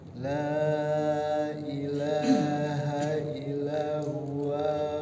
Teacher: Kalau wakaf panjang 2 harokat. Waw kan huruf mad ya. Jadi ketika sukun diwakafkan. Jadi panjang.